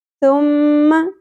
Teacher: میم مشدد غنہ ہوگا آواز کو ناک میں تھوڑی دیر کے لیے ہولڈ کر کے رکھنا ہے ٹھہرانا ہے لیکن خیال رہے کہ غنہ تو ہم نے کرنا ہے اس زبر کو ہم نے زیادہ نہیں کرنا.